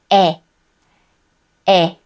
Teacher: When the shapes of a and e come together, they form this. But we do not read it as a-e. It is one vowel sound, 에. 에.